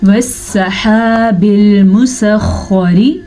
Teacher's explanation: را کے نیچے زیر ہے تو را باریک پڑھی جائے گی. اور ایک اور چیز کا خیال رکھنا ہے کہ میم پہ پیش ہے، اس کو لمبا نہیں کرنا.